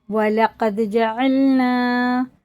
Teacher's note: وَلَقَدْ جَعَلْنَا، جعلنا نہیں کر دیں گے، عین حرف ہلکی ہے، الف اور حمزہ سے بچا کے · دال میں قلقلہ ہے اور قاف بڑا ہے